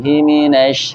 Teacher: Shin berarti mempunyai sifat tafasyi yang harus kita sempurnakan. Menyebar, tafasyi itu menyebar, udaranya menyebar.